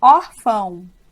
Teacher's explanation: o final na verdade tem som de u não à toa nós pronunciamos com a boca fechada